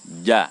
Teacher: Tengah lidah dia menyentuh atau menempel dengan langit-langit atas bersentuhan bersentuhan antara tengah lidah dengan langit-langit atas menghasilkan huruf Jim